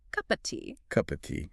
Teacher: The of is reduced to the minimal a sound, the schwa, and it blends directly into cup and tea.